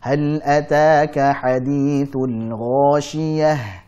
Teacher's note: Nah, kalau kita lihat di surah Al-Ghasyiyah ini banyak ayat yang diakhiri dengan huruf ta marbutah, yang jika kita waqaf berarti kita baca dengan huruf ha ya. Huruf ha memiliki sifat rakhawah, maka kita alirkan suaranya. Nafasnya mengalir dan juga suaranya mengalir.